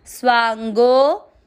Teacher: गो के बाद में है अवग्रह। अवग्रह में आपको गो की मात्रा को लंबा खींचना है